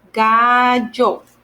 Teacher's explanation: We have to when it's like an L only by itself, it's lo, but when you have two L's, it's yo. It's kind of a little similar to the Y sound in English. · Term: double L's